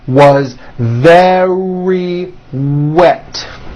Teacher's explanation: very starts with a V sound followed by a strong R